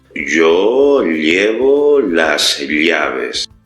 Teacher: al menos en nuestro español, se da la distinción entre la doble L y la y